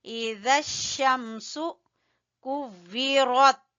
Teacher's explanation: ذال کو زبان کی نوک اور اوپر والے دو دانتوں کے سرے سے